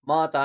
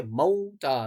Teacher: میم واو زبر مو ہے، اور موتا نہیں ہے، یہ موتا نہیں پڑھیں گے، یا ماتا نہیں پڑھیں گے، یہ موتا، میم واو زبر مو، واو ساکن سے پہلے زبر ہے، واو لین ہے یہاں پر